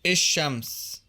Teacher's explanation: In Egyptian Arabic, the definite article is il rather than al, so it's. الشمس.